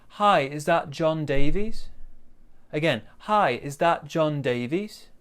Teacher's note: in this we've got some polite intonation and at the end we're going to go down up